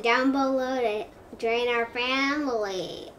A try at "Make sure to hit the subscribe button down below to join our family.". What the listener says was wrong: It sounds like you're singing a song. Let me say it, okay? Hit the subscribe button down below to be part of our family.